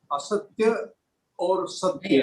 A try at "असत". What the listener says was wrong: असत्य नहीं है, देखिए शब्द बरोबर देखिए।